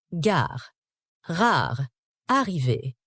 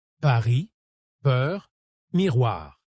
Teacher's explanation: Il faut que l'air passe librement, avec juste ce petit frottement guttural qui donne ce son typiquement français. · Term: Le R français